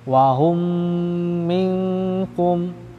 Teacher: ketika mim mati bertemu mim pasti dia mengeluarkan suara dengung temponya dua harokat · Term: idgham mimi